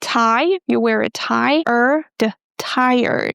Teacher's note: We start with tie and then we pronounce er as in bird and then the d